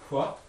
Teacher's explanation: We have a bilabial voiceless fricative